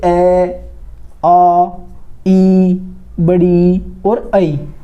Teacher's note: ये स्वर ऐसे होते हैं जिनमें आपके होठ जो है वे फैले रहते हैं, वे गोलाकार नहीं होते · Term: विवृत स्वर